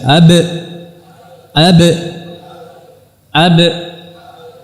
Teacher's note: Kemudian ba dengan merapatkan dan menekan karena dia sifatnya syiddah.